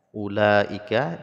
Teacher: la mad asli bertemu dengan hamzah dalam satu kalimat, panjangnya 5 harokat, disebut dengan mad wajib muttasil